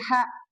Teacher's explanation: huruf kho dibaca biasanya bergeser jadi ke tengah ya. Jadi H itu ya.